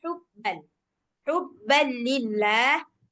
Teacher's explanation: yang H dari tengah tenggorokannya ada hubban